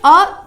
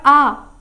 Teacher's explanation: पर जब आप दीर्घ स्वर का प्रोनाउंस करते हैं, उसका उच्चारण करते हैं, तो क्या हो जाएगा, आ, है ना, आ, ई, थोड़ा सा टाइम लगता है उसको बोलने में, ठीक है। तो इसीलिए अ खत्म हो गया तुरंत ही, और आ थोड़ा सा लंबा चलते हैं